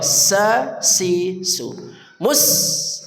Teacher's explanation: sin dari ujung lidah bersama ujung gegesi bawah